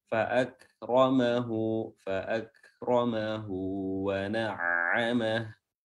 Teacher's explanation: Ra tebal karena dia berharokat fathah